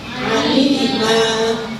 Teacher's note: Harokat fathatain jika dibaca wakaf menjadi panjang satu alif.